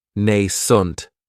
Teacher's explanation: this word has 2 syllables, and the stress is on that first syllable. It has the long A sound, nascent. That second syllable has that schwa, nascent.